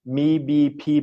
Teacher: your lips like when I pronounce the words me BP before they're all pronounced with your lips coming together